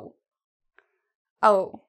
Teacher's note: It's not spread, it's actually very small. Your mouth actually almost looks like an O shaped.